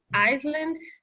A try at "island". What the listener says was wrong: we don't pronounce the ass here that's the only word we say island